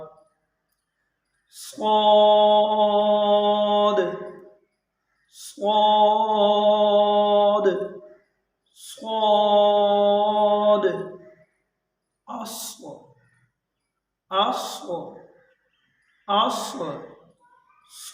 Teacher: اس میں بہت زیادہ سیٹی نہیں ہوگی، اسے نرم اور پر ادا کرنا ہے۔ اگر ہم اسے سختی سے ادا کریں گے تو اس میں زیادہ سیٹی کی آواز پیدا ہو جائے گی، جو کہ سین کی آواز ہے۔